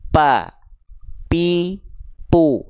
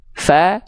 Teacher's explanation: huruf P itu yang nempel bibir atas dan bibir bawah sedangkan huruf Fa ujung gigi seri atas disentuhkan dengan bibir bawah bagian dalam yang basahnya